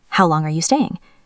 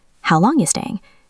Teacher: Sometimes you sounds like yah. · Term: fast version